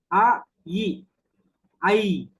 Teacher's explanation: ஐ என்பது நெடில் எழுத்து என்பது அறிவோம் அ ஈ என்கிற இரண்டு எழுத்துக்களினுடைய சேர்க்கை தான் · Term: ஈரொளிகள்